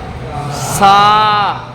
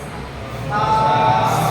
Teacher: সা, জিভটা নিচের দাঁতে লাগছে, জিভটাকে উপরের দাঁতের আগায় লাগিয়ে বলতে হবে সা। সা, নিচে লেগে গেলে অক্ষর উচ্চারণ হবে কিন্তু তার সব আদায় হবে, হয়তো সবটা পাওয়া যাবে, তাহলে সিন হয়ে যাবে।